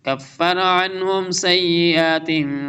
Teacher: کفر عنهم اظہار ہوگا، نون کے ساؤنڈ کلیئر ریڈ کریں گے